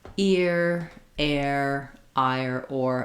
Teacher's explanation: In American English, we say the sound with our tongue bunched up in the back. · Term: American R